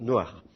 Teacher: Et puis le chet en hébreu moderne est dur